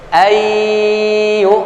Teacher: Ain pada dhammah dibantu dengan wawu sukun mad asli atau mad tabi'i, 2 harakat. Ayyu'minu, nun mati bertemu dengan huruf ya, idgham bi gunnah, ya. Jangan hanya sekedar idgham memasukkan saja bunyi huruf nun lebur kepada huruf ya, tidak, tapi perhatikan juga apa rambu gunnahnya, ya.